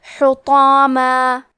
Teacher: ہمیں مد الف کو بھی بھاری آواز میں ادا کرنا ہے